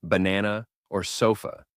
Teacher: the most common sound in English believe it or not it's that unstressed almost neutral sound you hear in the second syllable of words like banana or sofa